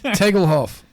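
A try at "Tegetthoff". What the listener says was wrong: I think you pronounced it wrong. Well, it's got two T's in the middle there, so it's not. not an L.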